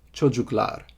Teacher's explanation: Yeah, so we have çocuk, which means child, and children is çocuklar. Back vowel, o, u, so you get the back vowel lar suffix.